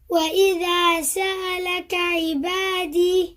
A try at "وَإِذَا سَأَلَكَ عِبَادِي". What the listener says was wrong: Make the ain clear. أعي.